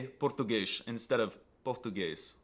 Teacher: pronouncing s's at the end of words as an sh sound